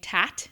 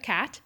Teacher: our velar fronting, meaning we're saying tat instead of cat.